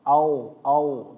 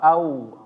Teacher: Waw ketika mati, jangan dia mendekati bacaannya itu menjadi o.